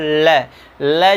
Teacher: क्यों कहा जाता है, क्योंकि ल का उच्चारण करते समय हमारी जिह्वा जो होती है वो क्या कर, ल जैसे बोलेंगे आपका दंत इसके मसूड़े से टच हो जाएगी, और आपकी हवा जो यानी प्राण जो होता है, यानी फेफड़े से जो हवा निकलती है वो कहाँ, वो बगल से निकल, यानी जिह्वा के बगल से निकल जाती है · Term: पार्श्विक व्यंजन